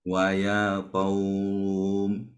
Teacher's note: namanya mad lin karena ada waw sukun sebelumnya ada huruf berharokat fathah